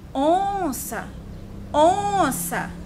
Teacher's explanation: qual foi a sílaba mais prolongada? O on.